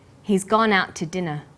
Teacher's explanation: we stress he's gone out and dinner the two is unstressed when we link out which is stressed